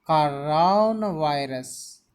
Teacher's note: The stress should be given on ra and va.